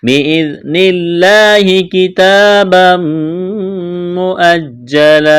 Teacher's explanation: بِإِذْنِ اللَّهِ كِتَابًا مُؤَجَّلًا کڑا زبر ہے، ایک الف کے برابر کھینچنا ہے. تنوین کے بعد میم مشدد ہے تو ادغام کریں گے، یہاں پر غنہ کریں گے، آواز ناک میں چھپائیں گے. كِتَابًا مُؤَجَّلًا وقف میں دو زبر کی تنوین کو الف سے تبدیل کرنا ہے.